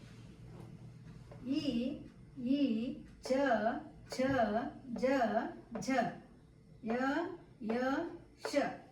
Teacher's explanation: ಜಿವ ಅಂದ್ರೆ ನಾಲಿಗೆ ನಾಲಿಗೆಯ ಮಧ್ಯದಿಂದ ಬರುವಂತಹ ಅಕ್ಷರಗಳು ಇವುಗಳಿಗೆ ಜಿವ ಮಧ್ಯೆ ವರ್ಣಗಳು ಎನ್ನಲಾಗುತ್ತದೆ ಅದನ್ನ ಇಲ್ಲಿ ವಿವರಿಸಿದ್ದೇನೆ ನಾಲಿಗೆಯ ಮಧ್ಯಭಾಗವನ್ನು ಜಿಹಾ